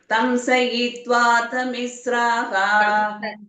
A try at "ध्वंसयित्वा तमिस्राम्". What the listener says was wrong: दंस இல்ல ध्वंस